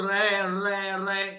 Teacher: जब आप बोलते हो तो आपकी जीभ वाइब्रेट होती है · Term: लुंठित